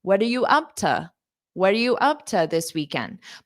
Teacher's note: The first time I said to very unstressed as ta.